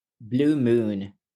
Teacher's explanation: There's a little bit of e before you go to the oo sound